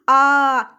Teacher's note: आ जब बोलेंगे तो मुंह हमारा पूरा खुल जाता है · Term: विवृत